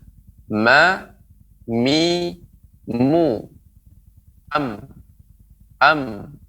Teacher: Ada bertemu dua bibir tapi didengungkan, yang keluar disertai dengan dengung, ya, gunnah, yang keluar dari kedua pangkal hidung, yaitu huruf mim, ma.